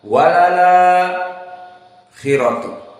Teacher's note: Adapun Warsh naql, dihapus hamzah dan harokat fathahnya akhirat dinakalkan kepada lam yang sebelumnya